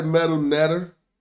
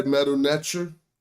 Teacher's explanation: the T and the TCH are allophones, meaning that they tended to become variant sounds of each other. Depending on such things as the following vowels, but in earlier Middle Egyptian, they are distinct sounds.